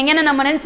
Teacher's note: எங்கன்னு நம்மன்னு சொல்லும் போதே அது மூக்கிலேருந்து பேசுகிற மாதிரி தான் இருக்குது. ஸோ அது மூக்கிலேருந்து பிறக்கக்கூடிய எழுத்துக்கள்.